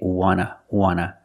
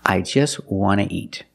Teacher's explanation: the T in want is an NT so we don't pronounce the T and we say wanna